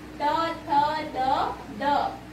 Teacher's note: जो हमारी जीवा है वो दांत को स्पर्श करके जो साउंड निकलता है उसे हम बोलते हैं दंत्य व्यंजन